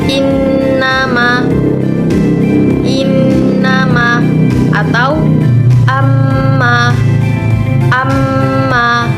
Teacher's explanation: Cara pengucapannya yaitu dengan adanya dengung di bagian hidung. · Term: gunnah